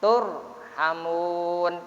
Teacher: Sebelum ra sukun tersebut ada huruf yang di garis depan, maka ra-nya dibaca tafkhim, artinya tebal.